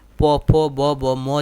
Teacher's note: এই উষ্ঠ ব্যঞ্জন ধ্বনি, উষ্ঠ মানে হচ্ছে ঠোঁট, অর্থাৎ যে আমাদের দুইটা ঠোঁট আছে সেই ঠোঁটকে বলা হয় উষ্ঠ বলা হয়। আর এই দুই ঠোঁটের দ্বারা আমরা প ফ ব ভ ম এই উচ্চারণ করে থাকি। এখন উষ্ঠ ব্যঞ্জন ধ্বনি যখন আমরা উচ্চারণ করব তখন মুখ্য বাক প্রত্যঙ্গ হচ্ছে আপনার যে মেন হচ্ছে আপনার নিচের ঠোঁট, আর গৌণ মানে গৌণ বাক প্রত্যঙ্গ হচ্ছে আপনার মানে একটু কম, যেটা হচ্ছে আপনার উপরের ঠোঁট।